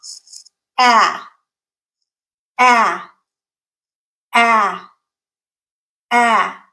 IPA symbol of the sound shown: æ